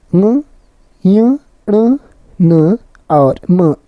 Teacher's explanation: 2 अनुनासिक व्यंजन जिन व्यंजनों के उच्चारण में वायु नासिका मार्ग से निकलती है अनुनासिक व्यंजन कहलाते हैं।